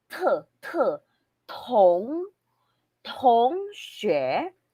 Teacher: we will not pronounce it as T just like in English. If ever we encounter pinyin or phonetics with letter T, we will pronounce it as T na may hangin